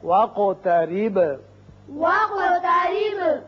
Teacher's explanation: قاف پر قلقلہ ادا ہوگا اور با پر بھی